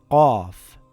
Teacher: The sound does not make a k sound, it comes from the back of the mouth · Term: qaaf